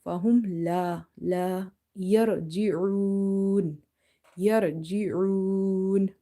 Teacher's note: This ra is heavy here because if ra is having sukun and before it if you see fatha or dhamma you make it heavy. If there is a fatha or dhamma on top of the ra, ra is heavy, and if you see ra is sakina and before that there is a fatha or dhamma, still ra is heavy.